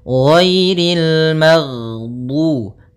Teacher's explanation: Jadi ketika melafalkan ghain, nafas kita tertahan, suara kita dialirkan. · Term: sifat rokhawah